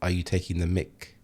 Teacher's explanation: So the K isn't really emphasized that much.